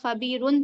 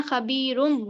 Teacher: دو پیش کی تنوین کو ہمیں میم سے بدل کر پڑھنا ہے، یعنی تنوین کی آواز کو میم سے بدل کر پڑھنا ہے، یہ ہے اقلاب۔